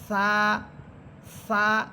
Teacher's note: সা হরফের মাখরাজ হচ্ছে জিহ্বার আগা সামনের উপরের দুই দাঁতের আগার সাথে লাগবে। সা সা এটা হচ্ছে মাখরাজ, আর সিফাত হচ্ছে সা এটা নরম হরফ, সা এটা চিকন হরফ।